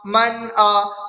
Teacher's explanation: نون کی آواز کو ظاہر کر کے بغیر گناہ کے جلد پڑھیں گے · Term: نون ساکن